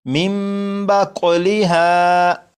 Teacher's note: اسی طرح یہاں پر دیکھیے گا، یہاں پر بھی نون ساکن کے بعد با ہے، جب نون ساکن کے بعد با ہے تو اس نون ساکن کو میم سے بدل کر غنہ کر کے پڑھیں گے، اور یہ لکھا ہوا ہے من، لیکن نون ساکن کے بعد با ہے تو اس نون کو میم سے بدلیں گے اور غنہ کریں گے، اور یہ بن جائے گا مم باقولیہا۔ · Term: اقلاب